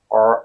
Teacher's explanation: R, but still your tongue doesn't touch your teeth or your palate. The tongue is curled up, and kind of touches your palate, the upper palate, but it doesn't quite touch it, right? It's not, it's It's as if you're trying to obstruct the airways, block them, and prevent the airflow from within, and that's how you get the sound R. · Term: R sound